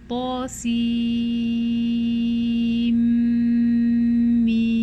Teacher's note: that ghunna is coming from the mim and not from the noon at all. Okay, and this is the exception to the rule of idgham occurring only between two words.